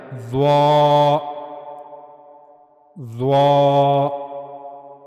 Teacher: ضا کی ادائیگی کے لیے زبان کی نوک کا اوپر والا حصہ اوپر کے اگلے دو دانتوں کے کنارے، یعنی زبان کی نوک کا اوپر والا حصہ جب اوپر کے اگلے دو دانتوں کے کناروں سے جا کر ملے گا تو وہاں سے ضا ادا کیا جائے گا، لیکن پر آواز کے ساتھ · ضا یہ بھی پر حروف میں سے ہے، اس کو بھی پر یعنی موٹا کر کے پڑھا جائے گا، ضا۔ اگر اس کو باریک پڑھیں گے تو یہ پھر ذا کی طرح ہو جائے گا، جو کہ غلط ہے۔